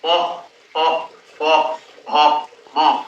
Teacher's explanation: এই 5টি ধ্বনি উচ্চারণ হচ্ছে কিন্তু আমাদের দুটো ঠোঁটের একে অপরকে স্পর্শ করে। সেই জন্য এটাকে বলা হচ্ছে ওষ্ঠ ব্যঞ্জন।